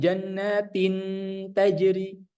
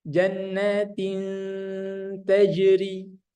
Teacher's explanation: huruf nun atau tanwinnya dia tidak dileburkan tapi disamar-samarkan